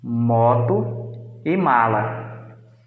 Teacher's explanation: ar sai com um abaixamento do palato mole, saindo pelo nariz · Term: sons nasais